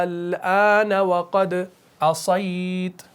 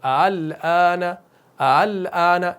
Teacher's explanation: مد لازم کرتے ہیں، مد لازم کلمی مثقل، اس کو کھینچتے ہیں اور اس کے اندر ابدال کرتے ہیں۔ لیکن آپ اس کے اندر تسہیل بھی کر سکتے ہیں، لیکن ہم کرتے نہیں ہیں، ہم اس کو کھینچ کر ہی پڑھتے ہیں۔